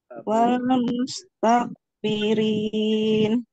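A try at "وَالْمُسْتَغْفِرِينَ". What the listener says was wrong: Ininya hati-hati kayak bunyi kok ya. Wal mustaghfirin.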